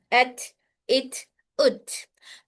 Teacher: तो ये हर्फ अपने मखरज से मिलकर सिफत शिदा शिद्दा अदा करता है, फिर एयर फ्लो के साथ सिफत हमस अदा होगा।